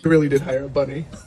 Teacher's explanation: The label raised his voice in the end of an exclamatory sentence to show his surprise. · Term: sentence stress